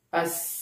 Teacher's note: Contohnya ketika kita mengucapkan huruf sin, as, kita rasakan pada pita suara itu tidak bergetar, yang menandakan bahwa sin adalah masuk kelompok huruf hams